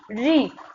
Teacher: री, तो आपकी जीवा ऊपर की ओर हो जा रही है, तो आप समझ गए कि ये मूर्धा से है